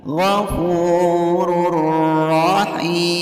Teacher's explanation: Karena ada tanwin dhammah yang bertemu dengan huruf idgham bila gunnah yaitu ra. Cara membacanya bunyi ru dimasukkan ke ra tanpa mendengung.